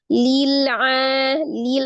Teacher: ketika lam sukun juga tidak dipantulkan ya, tidak lil. Hanya dialirkan sebagian. Lil a-nya mad. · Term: sifat tawasud